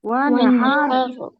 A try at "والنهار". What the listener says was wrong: ওয়ান এরকম কলকলা হবে না। ওয়ানহার ওয়ানহার ওয়ানহার